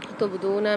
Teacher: تبدون میں با کے اندر قلقلہ ہوگا، قلقلہ والا حرف ہے، دال کے ساتھ واو مد آ رہی ہے تو یہاں پر بھی ایک الف مدار کھینچ کے پڑھیں گے